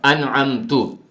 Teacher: کوئی آدمی انعمت کے اوپر جو زبر ہے اس جگہ پر پیش پڑ جاتا ہے انعمتو، اب اس کا معنی بہت زیادہ خراب ہو جاتا ہے۔ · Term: ابدال حرکت بالحرکت